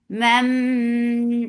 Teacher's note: idgham shafawi, so keep the sound in your nose for a longer time. This is idgham shafawi.